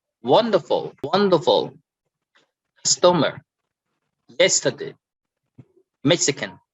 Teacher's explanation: so we stress on the first syllable of each word